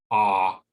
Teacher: the short o sound ah at the bottom of the back of the mouth